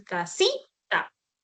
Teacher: cuando yo digo casita, acentúo la I, ¿sí o no? Fonéticamente es esto, tú dices casita, ¿sí? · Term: acento